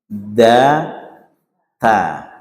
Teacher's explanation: ta gitu ng itu pada akar gigi situ tempatnya ujung lidah menyentuh di akar gigi